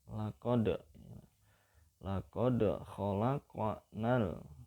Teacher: Laqad itu tajwidnya namanya qalqalah, ya. Qalqalah sugro atau qalqalah kecil karena berada di tengah kalimat. Laqad dan bacanya dipantulkan